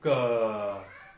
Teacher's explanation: कंठ के ऊपर उंगली रख के बोलो क। अब कंठ के द्वारा आवाज आएगी।